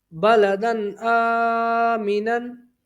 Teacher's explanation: ٹھیک ہے، یہ حروف حلقی میں سے ہے، تو یہاں پر اظہار ہوگا، یعنی غنہ نہیں کریں گے. با زبر با، لام زبر لا، بالا، دال دو زبر دن، بالادن، حمزہ کھڑا زبر آ، بلدن آ، میم زیر می، بلدن آمی، نون دو زبر نن، بلدن آمینن.